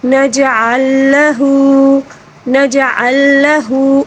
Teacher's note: جیم کے اوپر ساکن ہے، اس کو کلکلے کے ساتھ پڑھیں گے